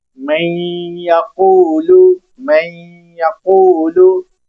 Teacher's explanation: یا میں مکس کر کے پڑھیں گے، من یقولو، من یقولو، نون کو ہم ناک کے ذریعے سے ادا کر رہے ہیں، آگے یا بھی ادا ہو رہی ہے ، من یقولو، من یقولو، اس گنگنانے کو غنہ کہتے ہیں،